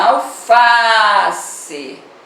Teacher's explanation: Na palavrinha alface, onde você demora mais, é no Fá, é a penúltima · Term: paroxítona